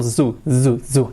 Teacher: Ese sonido es una S sonora. El sonido Z.